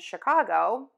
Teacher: sometimes we pronounce these letters as an SH in champagne, machine, and Chicago,